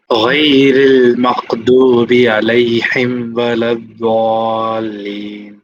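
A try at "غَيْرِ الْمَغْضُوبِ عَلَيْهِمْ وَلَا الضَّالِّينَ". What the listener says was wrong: थोड़ा सा इसमें काफ की आमेजिश हो गई, इसमें थोड़ी सी थोड़ा सा काफ मिल गया इसमें, वो नहीं होना चाहिए। गैरिल मग़दूबि ऐसा होना चाहिए।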